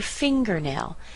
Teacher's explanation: you'll notice that finger is stronger than nail, but the eer in here, that's also pretty weak.